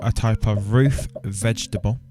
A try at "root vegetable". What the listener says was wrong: It's root, mate. Not a roof vegetable. No vegetables grow on a roof.